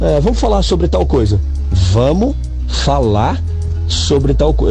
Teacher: Os verbos, a gente tende a não pronunciar o R no final deles.